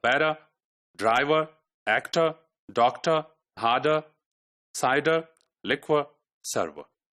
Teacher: any word which is ending with ER sound that er is replaced with schwa